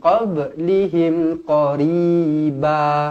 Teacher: kemudian qablihim ba qalqalah sughra dibaca melantun. Pastikan baca melantun, jangan baca min qablihim min qab, tak nak min qab.